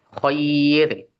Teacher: rnya di situ dibaca tipis